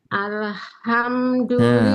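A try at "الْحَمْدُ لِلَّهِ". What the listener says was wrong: Nah, lamnya hati-hati, jangan mantul.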